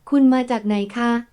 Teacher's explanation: polite particle for women when it's a question. So not a falling tone, but a high tone.